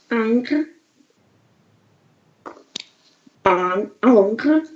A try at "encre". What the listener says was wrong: Только encre, еще глубже.